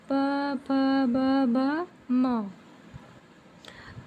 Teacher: ओट व्यंजन मतलब दोनों ओठों से जो बोलते हैं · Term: ओष्ठ व्यंजन